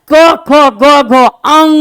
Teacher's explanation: अंग जब बोलते थे इसमें नाक की ध्वनि जाती है, तो इसलिए अनुनासिक।